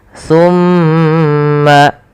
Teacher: Kemudian pada lafal mma atau tsumma itu ada bacaan namanya ghunah yaitu suara mimnya ditahan sepanjang dua harakat. Tumma baru alirkan. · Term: gunnah